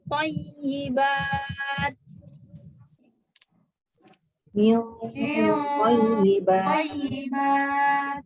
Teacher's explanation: Dia tebal lagi karena dia ketemu to. Dengungnya tebal menuju to.